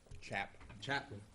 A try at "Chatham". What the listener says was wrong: You keep saying Chatman, it sounds like.